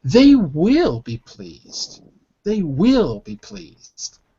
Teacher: the emphasis is on will the strong word is will